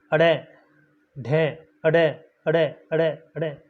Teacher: तो हमारी जो जीभ है, जीभ की नोक झटके से नीचे गिरती है। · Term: उत्क्षिप्त व्यंजन वर्ण